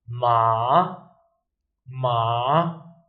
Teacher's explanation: So you start a bit high, you go down a little bit, and then you go up again. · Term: third tone